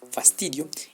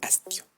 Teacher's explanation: se sustituirá la fricativa labiodental sorda, el grafema F, por la glotal, grafema H. Se reduce la oclusiva dental sonora, grafema D, por la oclusiva dental sorda, el grafema T, y se compone por un hiato natural, IO.